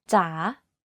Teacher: In rising tone, the pitch goes down first and then goes up. Take, for example, the Thai name จ๋า You can hear that my pitch went down slightly and then up when pronouncing this word.